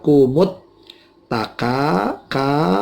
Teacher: Alha kumut taka ka, ini mad tobi'i, ada fathah diikuti alif mati, ka ini dipanjangkan 2 ketuk